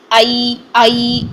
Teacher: وسط اللسان سے یا لین ادا ہوتا ہے۔